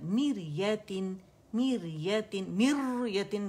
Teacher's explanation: را سکون سے پہلے ہمارے پاس اوریجنل کسرہ آ رہی ہے، لہٰذا ہم نے کیا کرنا ہے باریک را پڑھنی. میر، ایم آئی آر، میریتن، میریتن، میریتن کر کے نہیں پڑھ سکتے آپ، میریتن تقریر کی مقدار کم ہوتی ہے.